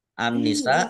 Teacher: Nun tasdid dibaca gunah atau mendengung ditahan kira-kira dua harakat agar tampak dengungannya